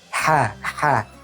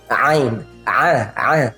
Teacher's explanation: Sebagaimana ha, ha itu dia agak kita jepit sedikit di kerongkongan. Ha, ha, tapi tidak terlalu dijepit. Sedangkan ain ini lebih dijepit lagi. Ain, a. Jadi orang sering melakukan cheating dengan menggunakan makhraj di rongga hidung, khayshum.